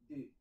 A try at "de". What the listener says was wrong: Deux. Pas D. Deux. Ici, tu as D. C'est la lettre, mais là, quand on est dans la chaîne parlée, tu vois la chaîne, attachée. Voilà, là, c'est plus la lettre D, c'est le son de.